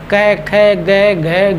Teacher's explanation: ये क वर्ग, ये इसकी ध्वनि कहाँ से निकलती है? कंठ से निकलती है। तो कंठ से निकलती है, तो कंठ को अगर बंद कर देंगे तो मतलब ये क के जो वर्ण है नहीं निकलेंगे, पांचों के पांचों, क ख ग घ घ, है ना, जैसे बंद करके निकल रहा है, नहीं निकलते हैं।